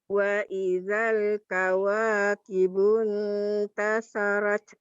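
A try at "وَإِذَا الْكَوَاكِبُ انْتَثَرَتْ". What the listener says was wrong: Tasarat belum bulat. Wa Tasarot rot.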